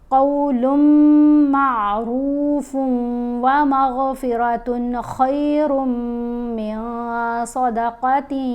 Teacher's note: نون کی آواز سائلنٹ ہو جائے گی، پھر ہم نے پچھلے حرف کو مشدد حرف سے ملانا ہے غنہ کرتے ہوئے۔